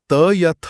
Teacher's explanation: आप त या थ बोलकर देखिए, आपकी जीभ की नोक सीधे आपके ऊपरी दांतों के पिछले हिस्से को धकेल रही होगी। अगर किसी के दांत ना हो तो वो स्पष्ट रूप से त बोल ही नहीं पाएगा।